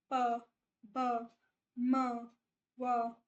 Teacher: Bilabial मैंने आप लोगों को बता ही दिया, जब आप इन वर्ड्स को बोलोगे, प, ब, म, व, है ना, तो आपके जो लिप्स है वो जुड़ेंगे साथ में। दोनों लिप्स साथ में जुड़ेंगे